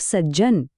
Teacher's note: પાડોશી વ્યંજન જેવો બનવા માટે પોતાનો અવાજ બદલી નાખે અહીં જુઓ સતનો ત જનના જ સાથે ભળવા માટે પોતે પણ જ બની ગયો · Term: વ્યંજન સંધિ